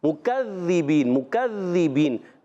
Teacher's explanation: زال کی ادائیگی کلیئر رکھنے ہے، زال کو زا سے نہیں بدلنا